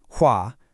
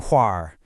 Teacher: We don't just awkwardly tack an R onto the end, the entire vowel structure of the syllable assimilates and rolls backward toward the throat. It's basically an economy of effort by our speech organs, creating a softer, much more fluid sound that is highly characteristic of certain Mandarin dialects. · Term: erhua